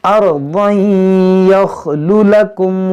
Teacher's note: او اطرحوه ارضا یخل لکم، دیکھیں یہاں پر تنوین کے بعد یا یہاں پر ادغام کریں گے، اور اس را کو موٹا پڑھیں گے، را ساکن سے پہلے زبر ہے